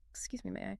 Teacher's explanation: using a rising intonation at the end